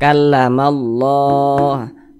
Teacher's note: Sehingga lafaz Allah dibaca panjang. Ini mad tabi'i, panjangnya itu 2 harokat. 2 harokat itu kira-kira sepanjang 2 ketukan.